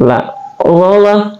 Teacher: Allah adalah tarful lisan, keluar di ujung lidah kita, tapi ujung lidah kita menempel ke bawah.